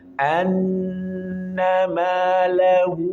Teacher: Ada nun bertasydid di sini, maka tahan agak lama.